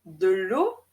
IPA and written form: də lo (de l'eau)